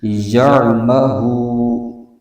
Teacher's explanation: یہاں پر واو مدہ ہو رہا ہے تو اس کو ایک الف کھینچ کے پڑھیں گے